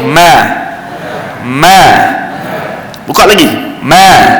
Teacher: Dia beza kalau kita sebut dalam bahasa kita, mim dia, mulut dia akan jadi ma. Bila kita buka, automatik makhraj dia berada di tengah bibir. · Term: huruf mim